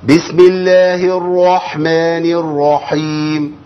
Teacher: كده استقبل اتصلاات حضراتكم باذن الله تعال يبقى احنا محتاجين ايه محتاجين اننا نفخم الراء بس ما مبلغش برض قوي